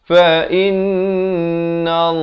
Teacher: dibacakan tebal lafz jalalah 2 harakat